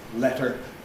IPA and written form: ˈletɚ (letter)